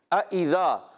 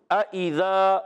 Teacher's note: اچھا اب دیکھیں یہاں پر دو حمزہ ہیں، اذا، اچھا دونوں کو ہم نے تحقیق سے ادا کرنا ہے، خوب ظاہر کرنا ہے، اس میں نرمی نہیں ہوگی۔ اذا، دونوں حمزہ خوب تحقیق سے خوب ظاہر ہوں گے